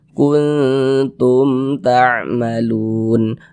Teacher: ini mim sukunnya bertemu dengan huruf ta bukan huruf ba bukan huruf Mim ya izhar syafawi hukumnya baca jelas tak berdengung kuntum tamalun Lun dibaca panjang ini namanya adalah Mad Arid lisukun